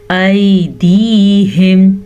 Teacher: या साकिन से पहले ज़बर है तो ये या लीन है, इसे नरमी से पढ़ा जाता है, बगैर खींचे का पढ़ा जाता है